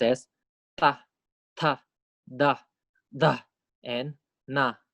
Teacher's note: line on the dental consonants dento means teeth right dentist so we use the tip of tongue and we put it against the back of our upper teeth we don't put it we don't put it at the alveolar